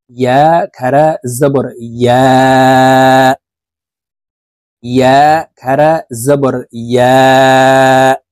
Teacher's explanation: আমরা অনেকে ইয়ার উচ্চারণ হামজার উচ্চারণ করে থাকি, ইয়া খারা জবর আ বলে থাকি। ইয়ার উচ্চারণ জিহ্বার মধ্যখান থেকে হবে, কারণ ইয়ার মখরাজ জিহ্বার মধ্যখান থেকে।